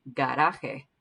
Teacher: Notice that this R is not trilled. It almost is like a D.